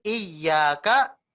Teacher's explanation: ya-nya ini ditasdid tapi tasdidnya enggak usah lama-lama ya cukup kalau mau diharakatkan ya walaupun harakat kan buat panjang ya